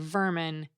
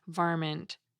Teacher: people started adding a T sound to the end of vermin, creating varmint. This random addition of a sound, for no linguistic reason, is called an excrescence.